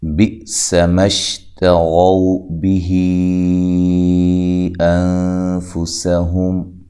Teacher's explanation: اس کا جو حمزہ ہے جھٹکے سے ادا کرنا ہے، سین کو باریک سیٹی سے ادا کرنا ہے اور سین کو لمبا نہیں کرنا۔